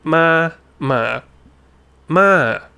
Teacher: So ma ma ma. So you're starting a bit higher and you're you're coming down. You're falling down but you're starting high